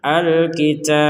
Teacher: karena huruf terakhirnya adalah ba kemudian kita berhenti maka dipantulkan Alkitab kalau dilanjutkan maka pantulannya hilang lilladzina yaktubunal kitaba biidihim tsumma